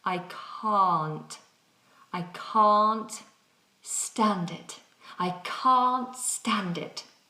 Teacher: When we're saying I can't do something, I cannot do something, then we must have a long vowel sound. So we have an open mouth, ah.